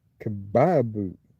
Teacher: Got to put that stress on that middle syllable.